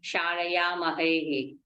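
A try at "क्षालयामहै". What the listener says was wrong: No, Visarga is not there. Shalayavahai, Shalayamahai.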